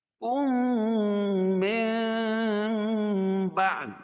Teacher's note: میم ساکن کے بعد میم آئے تو ادغام شفوی ہوگا، یعنی یہاں غنہ کر کے پڑھیں گے۔